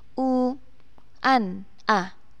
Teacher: Itu adalah hukum bacaan mad tabi'i. Maka harus dibaca panjang satu alif, dhammah yang diikuti dengan wawu, u an a. Nah, ini harus dibaca jelas atau terang.